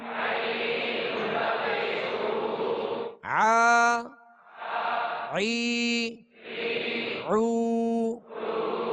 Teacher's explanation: عین کی خوب مشق کرنی ہے تاکہ یہ وسط حلق سے صحیح ادا ہو